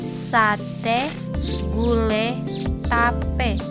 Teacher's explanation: Dan E, posisi lidah depan tidak bundar, yaitu vokal yang diucapkan dengan mulut tidak membundar, melainkan terbentang lebar